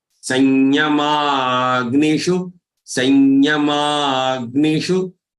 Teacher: sa has anuswar. So it has to be pronounced as nasal ya, as if there is another half ya between this sa and ya.